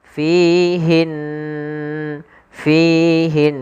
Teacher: berharakat tasydid maka ini kita hukumi dengan bacaan ghunah gunah yaitu kita membaca dengan memasukkan suara ke rongga hidung kita maka fihin fihin sambil ditahan dua harakat kemudian pelafal Q di